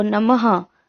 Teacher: विसर्ग जैसे नमः, इसमें क्या होता है, नाक से ध्वनि निकलती है। आप बोल के देखो नमः, तो आपकी नाक से भी ध्वनि निकल रही होती है।